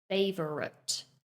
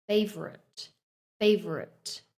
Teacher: Notice how in the middle we kind of condense two of the syllables together to make a weak sound. So it's more like favorite.